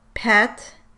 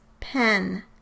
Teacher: In each pair you should hear that the vowel sounds different before the nasal consonant. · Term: Nasalization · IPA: [pʰɛt˭ ] VS [pʰɛ̃n ] and [pʰæt˭ ] vs [pʰæ̝̃n ]